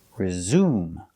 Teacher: the s is pronounced as a zebra z with a voice